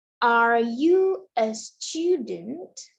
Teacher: Kita berikan penekanan ke are dan student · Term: sentence stress